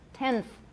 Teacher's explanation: right tenth is a better example the n becomes interdental tenth my n is interdental